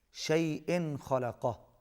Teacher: تنوین کے بعد حروف اظہار میں سے خا ہے، یہاں پر بھی اظہار ہوگا۔